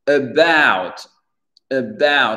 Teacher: L'accent tonique, il est sur le B-O-U-T, pas about.